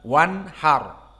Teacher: nun as-sakinah bertemu dengan ha. Maka apa hukumnya? Idhar. Wanhar. Maksudnya makhraj nun di sini idhar.